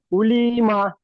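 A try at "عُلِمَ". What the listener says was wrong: উলি টান হয়েছে, উলি টান দেওয়া যাবে না, উলিমা, সবগুলো হারাকাত। উলি টান লামজেল্লি টান হয়ে যাচ্ছে।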